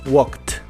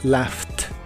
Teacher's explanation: a todos los verbos regulares que terminen con estos sonidos es decir el sonido de la k s p f x sh y ch cuando le agregas Ed para hacerlos en pasado esa Ed la debes pronunciar como una t Así es no como e ni como d simplemente como t